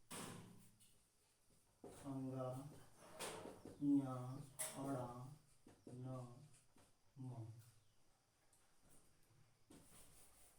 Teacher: अनुनासिक व्यंजन, अनुनासिक व्यंजनों की संख्या आपकी होती है ऐसे व्यंजन जिनके उच्चारण में वायु नासिका मार्ग द्वारा निकलती है